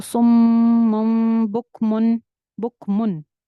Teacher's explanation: बुक मुन में नून जो छुपा हुआ है उसकी आवाज को हमें जाहिर करके क्लियर करके पढ़ना है, क्योंकि आगे हरूफ हल्की आ रहे हैं, आइन आ रहा है, तो यहाँ पे गुन्ना नहीं करेंगे।